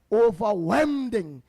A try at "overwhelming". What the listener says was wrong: No. It's overwhelming. Overwhelming. Not wending. Overwhelming.